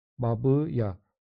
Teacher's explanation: Baba sözündəki ikinci sait A saiti I saitinə çevrilmiş olacaq. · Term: qapalı saitlər